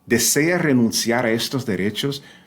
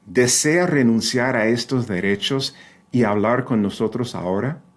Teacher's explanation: since the D is starting at the beginning of a phrase after a pause, it's going to be that harder D